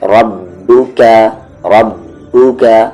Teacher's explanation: را یہ ہیوی ہوگا، با میں زور سے ملائیں گے